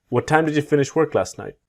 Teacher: with last, you will see the silent T